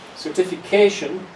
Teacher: in each word certification and here it's a long word so we also have something what's called a secondary stress so the main stress is certification the first one is a secondary stress which is not quite as strong but it's stronger than